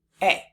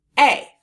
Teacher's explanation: we hear the long A sound in the word A, but we also hear the schwa sound depending on how someone says it. That schwa sound is when someone says the word A as a.